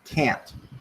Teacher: Can't is stressed and pronounced can't, with the final sound being a glottal stop.